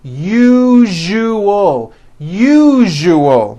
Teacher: syllable jus the one with the underline needs to be voiced put your hand on your throat and feel for the vibration in the second syllable